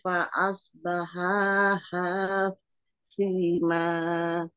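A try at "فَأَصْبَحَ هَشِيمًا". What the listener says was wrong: Umi, yang satu harokat tidak boleh diayun.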